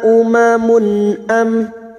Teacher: Duma tanwin dibaca jelas tanpa mendengung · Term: idhar halki